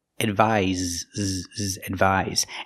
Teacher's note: The first word with the S has the Z sound like zebra.